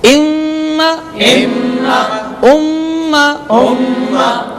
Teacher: غنہ کیا، ناک میں آواز لے گئے